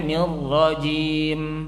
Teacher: Kalau kita baca misalnya nirrajim itu 2 harokat, maka bunyinya nirrajim.